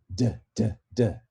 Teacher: Again, a voiced alveolar plosive. That would be apicoalveolar, tip of your tongue against your alveolar ridge. It's got to be voiced, it's got to be plosive.